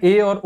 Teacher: अर्ध संवृत स्वर में क्या है, मुख आधे से कम खुलता है, जिसमें ए और ओ आते हैं।